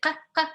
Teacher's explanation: And both of them are like voiceless, because you're putting your hand here, it's like ka, ka. You don't hear the vibration. And they are made by like releasing the air.